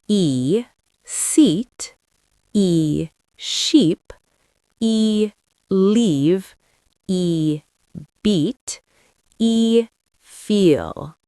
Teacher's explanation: Now switch to E. Longer, clearer, and slightly stretched. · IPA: /iː/